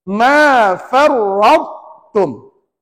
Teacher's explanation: Ra tebal, ta tebal juga. Cuma ta tu jangan melantun.